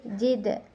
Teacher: terdapat hukum bacaan qalqalah sugra karena dal mati di tengah-tengah kalimat. Jadi dipantulkan itu sedang.